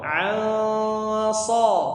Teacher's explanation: Kemudian ain, setelahnya nun sukun bertemu dengan huruf sha. Nun sukun ketemu dengan huruf sha dibaca ikhfa. Dan ikhfanya karena setelahnya adalah huruf sha yang punya sifat tebal ya, maka ikhfanya juga tebal.